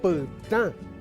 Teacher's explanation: En cambio esto se lee pta porque tiene una vocal nasal, la a